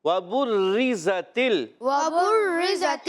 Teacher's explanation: یہاں راہ باریک رہے گی کیونکہ راہ کے نیچے زیر ہے. راہ مشدد جو ہوتی ہے وہ اپنے حرکت کے تابع ہوتی ہے تو یہاں راہ کو باریک رکھنا ہے.